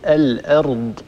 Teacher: لملحظ على لفظ الأرض، انتبهي لا تفخمي الهمزة تبعا للراء التي بعدها، لأن الراء هنا طبعا ساكنة مفتوحة ما قبلها، فالراء مفخمة، لكن لا نترك هذه الراء المفخمة تؤثر على جارتها الهمزة المستفلة المرققة. لابد أن نصفي الهمزة ونرقق هذه الهمزة ثم ننتقل إلى راء مفخمة.